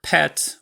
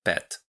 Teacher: plosives are never aspirated in Polish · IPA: [pʰɛt] with [pɛt]